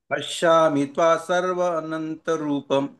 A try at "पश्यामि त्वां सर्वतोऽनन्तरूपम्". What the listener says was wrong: पश्यामि त्वाम है यहाँ पर, त्वाम और सर्वतोऽनंत रूपम, पश्यामि त्वाम सर्वतोऽनंत रूपम।